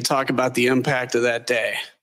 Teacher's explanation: It's gonna go vocal fry.